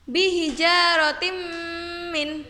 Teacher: Contoh yang keempat yaitu apabila tanwin kasrotain bertemu dengan huruf mim, maka cara membacanya bihijaratim min. Jadi huruf mimnya ditasydidkan dan dengan mendengung. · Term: Idgham Bighunnah, idgham biguna